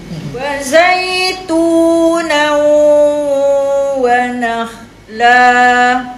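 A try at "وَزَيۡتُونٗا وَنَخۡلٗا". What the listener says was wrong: Zai dekat ya pula masuk ke hidung kan. Dekat kha tu. Tak nak jadi no.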